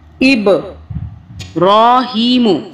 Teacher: با کو ہم نے قلقلہ کیا یعنی کہ طاقت سے پڑھا با کو